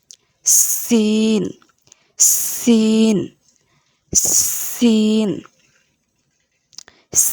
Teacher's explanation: সিন সামনের নিচের দাঁতের আগা হতে শীর্ষ পাতলা ভাবে বলতে হবে।